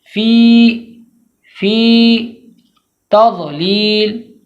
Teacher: یا مدہ کو ایک الف کے برابر کھینچ کے پڑھیں گے